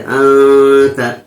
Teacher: جب نون ساکن کے بعد حروف اخفا کے 15 حرفوں میں سے کوئی حرف آئے تو اس نون ساکن کی آواز کو ناک میں 1 الف کی مقدار چھپا کر پڑھیں گے. جیسے انت، تا پر زبر ہے، زبر کو جلدی پڑھیں، تھوڑا بھی نہ کھینچے.